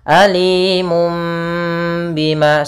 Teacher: membalikkan suara nun menjadi suara mim. Alimum bima sambil ditahan 2 harakat. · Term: iqlab